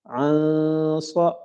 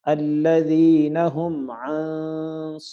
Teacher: نون ساکن کی وجہ سے یہاں نون ساکن کا غنہ ہوگا، کیونکہ نون ساکن کے بعد اخفا کے حرفوں میں سے ایک صاد آ رہا ہے